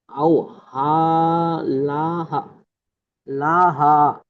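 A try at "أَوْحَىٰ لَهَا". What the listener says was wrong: আর একটু টান দেন।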